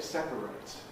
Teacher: The verb is to separate. The verb has a strong A